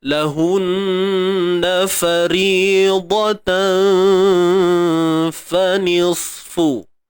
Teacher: Sebelum kita nak teruskan bunyi dia ni, kena tengok dulu fa ni bunyinya apa mana. Faridatan, fa nipis, maka dengung pun nipis. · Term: ikhfa hakiki